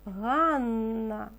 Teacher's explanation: Зверніть увагу що в слові Ганна дві букви н Ми чуємо подовжений звук